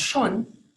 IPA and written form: 'ʃoːn (schon)